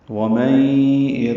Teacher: وا من میں میم کو نون سے ملانا ہے، لیکن نون ساکن کے بعد یا آنے کی وجہ سے ادغام ہوگا، من کی جگہ میں پڑھیں گے۔ وَمَن ادغام ناقص ہے، غنہ ہوگا، آواز ناک کے بانسے میں لے جائیں گے